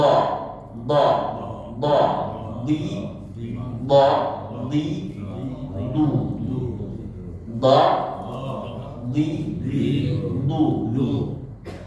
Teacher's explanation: huruf d itu keluar juga ee di antara tepi lidah yang kanan pangkal lidah yang kanan dan pangkal lidah yang kiri berdekatan dengan salah satu gerahan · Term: huruf do